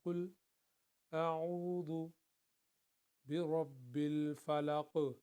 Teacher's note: عین کو حلق سے نکالنا ہے